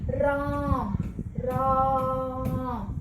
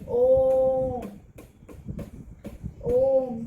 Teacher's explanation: दीर्घ स्वर से भी ज्यादा इनको समय लगता है इनको बोलने में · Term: प्लुत स्वर